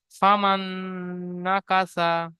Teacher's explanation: নুনের উপর তাজদিদ এসছে, তাজদিদ অক্ষরকে দুবার পড়তে হয়, একবার ডান দিকের অক্ষরের সাথে মিলিয়ে, একবার নিজে নিজে। তাজদিদ নুনের উপরে হওয়ার কারণে গুণনা করা ওয়াজিব, তাই একালি পরিমাণ গুণনা করে পড়তে হবে।